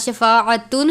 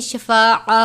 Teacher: وقف کی صورت میں ہم تا کو گول ہا سے تبدیل کرتے ہیں